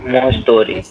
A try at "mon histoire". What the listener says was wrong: So no, story नहीं बोला मैंने इसको. Story नहीं बोला मैंने. I said histoire.Toire का sound है. Histoire. So it becomes mon histoire. Mon histoire.